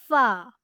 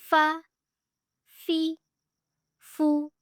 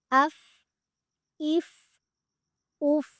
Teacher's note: ثنایا علیہ کا کنارہ جب نچلے ہونٹ کے اندرونی حصے سے ملتا ہے تو یہاں سے فا ادا ہوتا ہے۔ ثنایا علیہ یعنی اوپر والے 2 دانتوں کا کنارہ جب نچلے ہونٹ کے اندرونی حصے سے ملتا ہے تو وہاں سے ادا ہوتا ہے